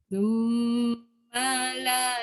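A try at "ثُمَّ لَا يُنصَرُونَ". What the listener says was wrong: Ma jangan panjang. Dia jangan mala. Tak boleh. Thumma la. La jangan pendekkan. Pendeknya ma je. Thumma la yunsarun. Yun. Ma jangan dipanjangkan suara ma. Dia tak boleh mala. Kalau mim alif, lam alif ya mala. Summala.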